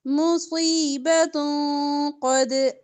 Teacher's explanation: دو پیش کے بعد قاف ہے تو اخفا ہوگا